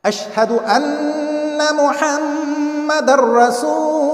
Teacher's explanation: So if either of these two letters comes after a noon saakin or tanween, this noon saakin will be merged into either this ra or lam completely without any nasalization or gunna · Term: complete ادغام